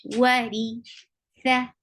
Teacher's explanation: Whenever ra is with kasra, it is light. This light ra sounds like ri.